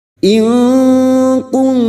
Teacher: In nun sukun bertemu kaf ikfa hakiki. Kita samarkan bunyi nun sukun dan mendengung selama 3 harokat.